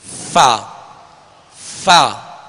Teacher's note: اوپر کے 2 سامنے والے جو دانت ہیں ان کا کنارہ اور نچلے ہونٹ کا تر حصے سے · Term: فا کا مخرج